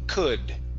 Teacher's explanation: instead of an ooh open your mouth more